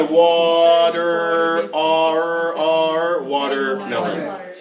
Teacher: if the sound before and after are both voiced, it will change, the T will change to D.